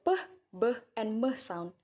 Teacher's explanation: this classification first bilabial sound it is the sun in which there is a constriction between the lower lip and the upper lip